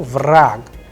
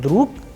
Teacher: here you will see that ge is changing into ke. Vrag, the sound is of ke at the end.